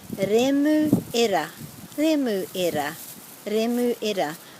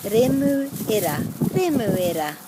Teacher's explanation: it's quite a tricky one because of the two rolled R's